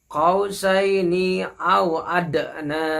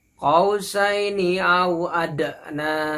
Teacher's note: huruf dal adalah huruf qalqalah. Jadi harus dibaca mantul ya.